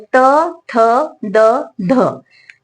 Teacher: आपण उच्चार करतानाच लगेच आपली जीभ दाताला लागते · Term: दंत्यवर्ण